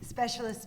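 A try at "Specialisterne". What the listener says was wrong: there needs to be an accent on that last e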